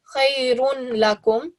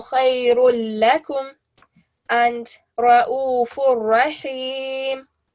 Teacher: You will literally just remove one of these dhammas, just leave it like a single dhamma that's there, so there will not be a tanween there anymore, and you will just join it to the lam mushaddad or to the ra mushaddad · then no nasal sound will be given, and you treat the tanween as a single stroke. So rather than saying khayrun lakum, you will say khayrul lakum.